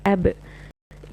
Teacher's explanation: ba is you close the lips together, but it's a stronger closing than the meme. For meme, it's just but for ba, it is a little more stronger closing.